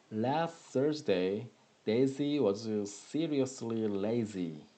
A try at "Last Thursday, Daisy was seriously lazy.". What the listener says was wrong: Okay, good.